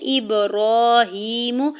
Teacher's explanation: ابراہیم، حمزہ کی زیر کو با ساکن کے ساتھ ملاتے ہوئے با ساکن پہ کلکلا کریں گے. را کے اوپر کھڑی زبر، ہا کے نیچے کھڑی زیر 2 حرکت کھینچ کے ادا کریں گے. میم کے پیش کو بغیر کھینچے ہوئے ادا کرنا ہے.